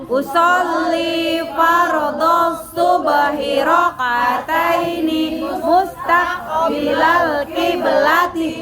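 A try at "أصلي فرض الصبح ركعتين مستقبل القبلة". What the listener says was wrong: Bonya masih ada yang panjang. Rakaataini masih ada yang ditarik. Lagi.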